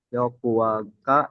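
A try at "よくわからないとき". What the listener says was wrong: Yoku. Berhenti di Yokuwa nggak boleh. Yoku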